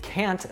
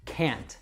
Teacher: with can't, not like can, it never reduces. You don't have that schwa sound there. So make sure that you're always saying that with a strong sound, can't. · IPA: kænt